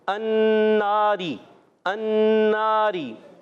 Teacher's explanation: जी हाँ, यहाँ ज़बर अलिफ को ज़बर देंगे और यहाँ नून मुशद्दद है, नून मुशद्दद में होगा एक अलिफ का गुन्ना, गुन्ना, एक अलिफ का गुन्ना करना है और ये रा हो जाएगी बारीक।